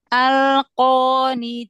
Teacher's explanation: Taknya kasih hamas biar tipis.